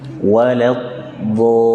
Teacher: Jadi tepi lidah menempel dari ujung ke ujungnya. Walad dol, ada nabr, nabr, penekanan seperti di ayun.